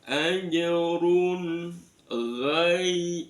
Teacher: itu ada madlin, dibaca lunak yaknya ghai